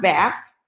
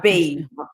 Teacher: Those TH sounds are different. And in African American English, when those sounds are pronounced, one has an F sound, bath. The other one has a V sound, bathe.